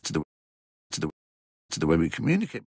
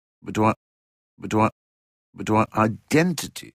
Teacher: Stephen Fry, like myself and many many others, tends to use /tə/ before a consonant but /tʉw/ before a vowel.